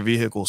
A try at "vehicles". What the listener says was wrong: you pronounce the h so harshly